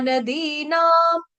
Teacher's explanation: जो अनुस्वार है उसका उच्चारण हो जाएगा आधा म, हलंत म से